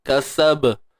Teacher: Kasaba ni kita matikan dengan lantunan ataupun sifat qalqalah secara kecil saja. Sughra. Lemah.